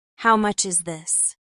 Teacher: Keep your voice rising slightly at the end to make it sound like a question.